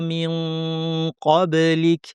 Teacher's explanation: জিহ্বার শেষাংশ থেকে কফ উচ্চারিত হয় উপরের তালুতে লাগিয়ে। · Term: ইখফা